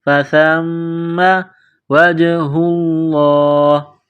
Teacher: میم مشدد ہے غنہ کریں گے